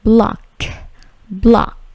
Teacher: Dengan bunyi yang memantul ya di huruf K-nya